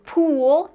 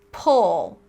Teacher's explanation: So pool tense tongue, pull relax tongue